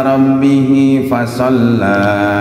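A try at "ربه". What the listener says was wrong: Rabbihnya dua harakat.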